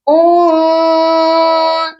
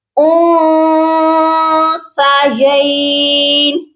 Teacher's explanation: یہاں پر دیکھیے نون ساکن پر ہوگا اخفا کیونکہ نون ساکن کے بعد سا ہے جو کہ حروف اخفا ہے. جب بھی نون ساکن کے بعد حروف اخفا آتے ہیں تو ہم نون ساکن پر اخفا کرتے ہیں، یعنی آواز کو ناک میں چھپا کر پڑھتے ہیں. یہاں ہم نے اپنی آواز کو ناک میں چھپانا ہے.